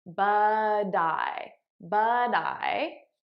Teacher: I'm saying it as a soft D because that's American pronunciation